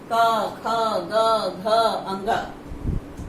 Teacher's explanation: कवर्ग का उच्चारण स्थान है कंठ। ये वर्ण कंठ से बोले जाते हैं।